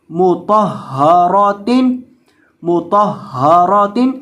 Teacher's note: یعنی یہ جو ہا ہے اس کو حلق کے آخری حصے سے آپ نے ادا کرنا ہے جو سینے کے ساتھ متصل ہے، اور طا کو اور را کو ان دونوں کو موٹا کر کے پڑھنا ہے، اور میم کو پڑھتے وقت آپ نے اپنے ہونٹوں کو گول کر کے پڑھنا ہے کیونکہ میم کے اوپر پیش ہے۔ تا دو زیر تن، مطہرات، مطہرات۔